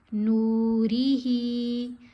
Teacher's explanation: نون کو ہم نے لمبا کیا, حرف مدہ ہے, اور ہا کو لمبا کیا, اس کے نیچے کھڑا زیر ہے.